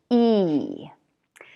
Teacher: The other important thing about the sound E is that it's long and it's what we call tense. That means that your tongue muscle is tensed. It's tight. It's working hard. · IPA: /iy/